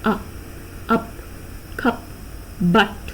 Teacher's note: It's a central vowel, central unrounded vowel. You can say just below half open, just below half open. Sometimes you will even hear it as a half open sound.